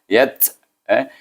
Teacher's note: Oleh kerana huruf ta itu huruf hamas, bunyilah angin dia.